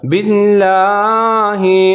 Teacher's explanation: بے کے نیچے زیر ہے، تو اس کو باریک پڑھیں گے، موٹا نہیں کریں گے، غلط ہو جائے گا۔